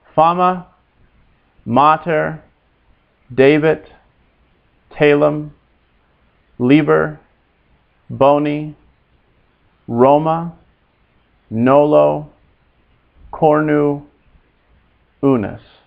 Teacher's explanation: Notice in any two-syllable word, as all these were, the accent is always on the first syllable.